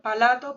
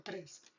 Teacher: la introducción de un sonido vocálico que no existe en una palabra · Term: inserción